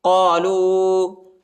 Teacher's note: واو کے اوپر جو ہے مد آیا ہے، اس کو تقریباً 2-3 سیکنڈ تک کھینچنا ہے۔